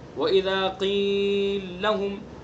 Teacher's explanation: تو لام کا دوسرے لام میں ادغام کیا جائے گا، پہلے لام کو ساکن کر کے دوسرے لام کے اندر ادغام کر دیا جائے گا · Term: ادغام کبیر